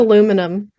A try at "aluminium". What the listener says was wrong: Aluminium. I mean, the way that it's being spelled is how you pronounce it, but it's not how it's spelled. It's got another I between the N and U. UK versus US name.